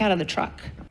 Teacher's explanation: Então aqui ela emenda o out of.